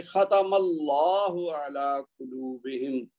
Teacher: پھر یہاں دیکھیے ختم اللہ علی قلوبہم، یہاں بھی یہ جو میم کے اوپر زبر ہے اس کی وجہ سے اللہ کا لام موٹا پڑا جائے گا